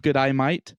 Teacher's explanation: the way to say good day mate in a stereotypical Australian accent is to say good i e ye might